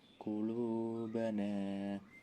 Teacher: Qulubana mat tabi'i sebab huruf wawu sukun didahului lam domah dan nun fathah bertemu alif, membacanya panjang 2 harokat